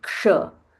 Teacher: So sh has k and murdanya sh. combined. So we say ksha.